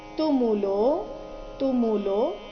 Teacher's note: ತುಮು ರಸ್ವ ಲೋ ದೀರ್ಘ ಲೋ ನಂತರ ಅವಗ್ರಹ ಇದ್ದ ಕಾರಣ ಅದನ್ನ ಸ್ವಲ್ಪ ದೀರ್ಘ ಹೇಳಬೇಕು